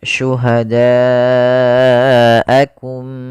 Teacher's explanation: bila hamzahnya dalam satu kata maka dinamakan dengan mad wajib muttasil maka cara membacanya panjangkan empat harakat